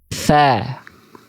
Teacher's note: Jadi ujung lidah teman-teman sentuhkan dengan ujung gigi seri atas, mengalir nafas, mengalir suara. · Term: huruf sa